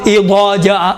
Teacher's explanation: ضاد میں دو آوازیں اکٹھی ہوتی ہیں، ضاد میں کون سی آواز، ضعین کی آواز اور دال کی آواز